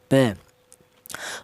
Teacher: Untuk huruf ba, huruf ba ini kelannya huruf berasal dari kedua bibir yang rapat ya